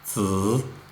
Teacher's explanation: third tone means you go first down and then back up.